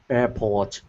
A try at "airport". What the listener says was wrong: Airport. So you have a slight British accent. Airport. So in American English, we have the R. It's always pronounced port. In British English, port. So in British English, it's ah. In American English, it's or. Ah, or.